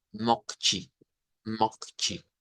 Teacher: H aspirada con esa ha aspirada es estamos obteniendo de hecho Yo diría que el 80% de Brasil habla de esa manera con Hache aspirada